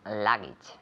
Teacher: the accent on the first syllable